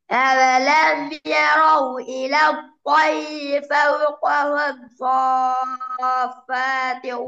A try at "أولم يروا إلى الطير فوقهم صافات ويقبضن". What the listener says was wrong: இப்ப அதுக்கு முன்னுக்கு போயில வந்தீங்க ரெண்டு இடத்துல. ஒன்று ராவ இன்னும் ஸ்ட்ராங் ஆக்கணும். ரி சவுண்ட் வரணும். சாத எத்தனை செகண்ட் இட்டணும்? 3 செகண்ட் இட்டணும். பால சத்த வைக்கணும்.